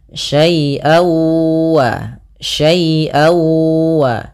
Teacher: suara tanwinnya masuk kepada huruf wau jadi awalnya syaian ketemu wau dibaca syaiwa syaiwa maka kemudian langkah